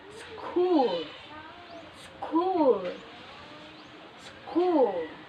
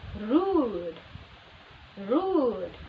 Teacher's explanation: just need to raise your tongue height towards the soft plate then your lips must be rounded rounded closely and the lips that are quite rounded must be made to protrude and the mouth is nearly closed not totally closed